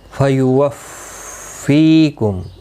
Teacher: فیوفیکم، تشدید والے حرف کو سختی کے ساتھ پڑھیں تاکہ تشدید ظاہر ہو۔ فی یا مدہ ہے، ایک الف کی مقدار کے برابر کھینچ کر پڑھیں گے